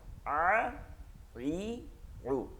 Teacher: ঠিক আছে, চাপ চাপ দিয়ে দিয়ে পড়তে হবে। আ মানে আ কি বলতে হবে গলার মধ্যে চাপ দিয়া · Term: আইন